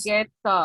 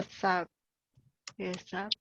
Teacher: se va a unir el sonido de la S con el sonido de la siguiente palabra, que es la U.